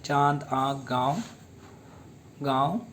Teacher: अब देखिए अनुनासिका, बेधुनिया जिनका उच्चारण नाक और मुंह दोनों से होता है, इससे अनुनासिका कहते हैं। जैसे चांद, आँख, गाँव, गाँव आदि।